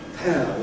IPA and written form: peə (pear)